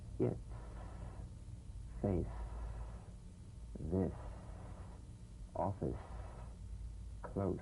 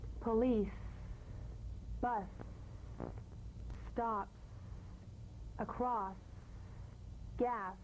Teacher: The S is like the Z, except it's unvoiced, so it's the same tongue placement as the Z.